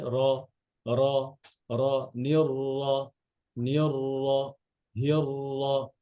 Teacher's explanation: আর আওয়াজটা ভারী হবে, আর ছড়ায় গেলে তো মনে করেন যে পাতলাই হয়ে গেল, ছড়াবে না। আবার ঠোঁট গোলও হবে না।